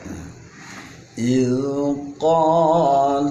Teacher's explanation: Tapi kalau huruf zal harus ditahan, jangan sampai ada pantul